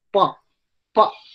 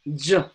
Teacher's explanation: For the part of pa, when you pronounce pa, there is no vibration. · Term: Unvoiced consonant